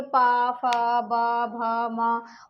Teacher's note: हमारा जो ओठ हैं वो आपस में टच होते हैं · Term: ओष्ठ